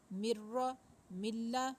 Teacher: نون کی آواز بالکل نہیں آنی، کوئی غنہ نہیں ہم کر رہے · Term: ادغام بلا غنہ